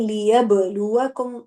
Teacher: लियब लुआकुम ऐसे करके कलकला जाहिर करना है